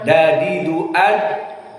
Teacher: Wawajada, maka dal juga dari huruf syiddah, dan makhrajnya dadidu ad, atraful lisan bertemu dengan as-sanaya al-ulya minal lisan, bertemu dengan gusi yang ada di gigi 2 seri yang atas, dadidu ad, dan dia termasuk huruf syiddah seperti jim.